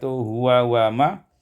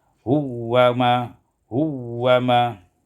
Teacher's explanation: idghamul waw fil waw, diidghamkan waw pada waw menjadi huwa ma.